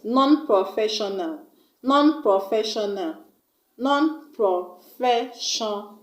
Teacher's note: we are going to stress on the third syllable from the end of the word, which is FE. Fe. Non-professional.